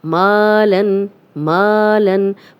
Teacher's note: ما اس لیے لمبا ہو رہا ہے کہ خالی الف پیچھے میم پہ زبر، تو یہ الف مدہ ہے، 2 حرکات لمبا کریں گے